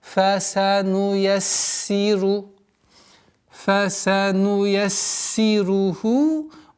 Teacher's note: Не торопясь, потому что син здесь фа с фрикативностью, син со свойством свист, свистящие звуки, поэтому нужно досконально произносить все свойства. Фасануяссиру, фасануяссируху, удваиваем, кясра, ра, ха, и обратите внимание на этот естественный соединительную долготу в размере двух огласовок.